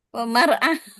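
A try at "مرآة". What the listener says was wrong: Mir'ah ya. Kok mar'ah? Saya pengen cewek nanti jadinya.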